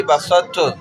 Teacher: بسط تو کہ پہلے حرف تو کی صفت استعلا اور اطباق باقی ہے, یعنی کہ اونچائی کی طرف جانا اس کا نا گویا.